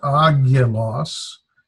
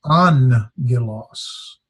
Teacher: when 2 gammas come together, the first one is pronounced like an N. So this is not agilos, it's angilos.